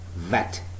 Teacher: It is upper teeth, lower lip, vet.